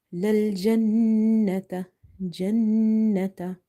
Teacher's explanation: So we have to hold this noon sound by doing the nasalization or gunna in this noon.